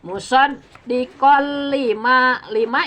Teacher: Idgham itu dimasukkan suara tanwin ke lam. Asalnya musaddiqon dimasukkan ke lam jadi musaddiqo ya.